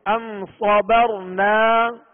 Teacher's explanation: را ساکن سے پہلے زبر ہے لہذا را کو پر پڑھیں گے